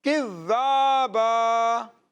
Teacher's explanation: کھڑے زبر کو بھی کھینچ کر پڑھا جاتا ہے. کھڑی حرکات کو بھی کھینچ کر پڑھتے ہیں.